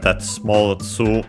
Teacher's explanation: Then we have that small tsu, which in the onomatopoeia itself would be cutting short the previous vowel, but then of course becomes also doubling of the following to